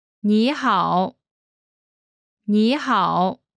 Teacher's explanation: When there are two third tones in a row, the first one changes to the second tone.